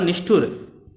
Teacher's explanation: ट ठ का उच्चारण स्थान क्या होता है? मूर्धन्य होता है, और मूर्धन्य शा भी इसमें होगा, तो यहाँ षटकोण वाला सा हो जाएगा।